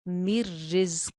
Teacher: जा के अंदर सीटी है